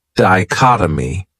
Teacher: this word has four syllables and the stress is on that second syllable